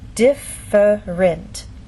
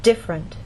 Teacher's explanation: most Americans say this word with two vowel sounds e and up